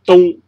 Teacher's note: 如果我们是平音的话，声音就由头到尾都是打平的，我们称为平音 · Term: 音平